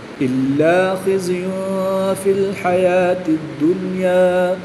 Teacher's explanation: تنوین کے بعد حروف اخفاء میں سے فا ہے تو یہاں پر اخفاء ہوگا یعنی غنہ کر کے پڑھیں گے